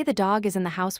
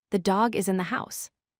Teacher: Instead, you should stress only the content words, dog and house. Say it like this: "The dog is in the house." Notice how you make dog and house sound loud and long. · Notice how you make dog and house sound loud and long. You make the is and in sound quick and weak. This sounds much more natural and like a native English speaker. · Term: correct stress